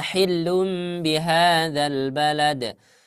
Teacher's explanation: ketika kita mengucapkan iqlab, ya huruf yang seharusnya dibaca nun itu digantikan ke huruf mim